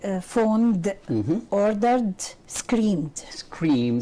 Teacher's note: So ed here is pronounced just as d, Why? because they are voiced.